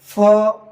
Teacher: এটাতে আমরা বাতাস বের করবো দাঁত লাগিয়ে ঠোঁটের সাথে